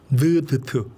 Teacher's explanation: 느드트는 우리 혀 끝에서 나죠